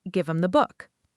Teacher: Them often reduces to m. Give them the book sounds like give them the book.